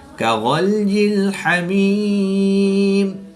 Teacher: یا ساکن سے پہلے میم کے نیچے زیر ہے تو یا مدہ کے بعد وقف کی حالت میں میم کی زیر کو ساکن کریں گے تو یہاں پر وقف کی حالت میں مد عارض ہوگی، 2 سے 3 الف تک کھینچ کر پڑھیں گے